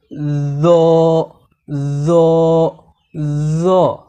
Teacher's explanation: জিহুবার আগা এবং সামনের উপরের দুই দাঁতের আগা মিলিয়ে মোটা করে পড়তে হয় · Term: জ হরফ